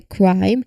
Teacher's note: remember the K here is produced at the back of the throat